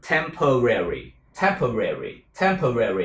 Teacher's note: Tiếng Anh đọc hình như có 3 âm tiết thôi, nhưng tiếng Mỹ là 4 âm tiết các bạn.